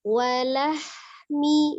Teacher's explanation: Hati-hati di huruf H-nya tidak dipantulkan, tidak walahmi ya.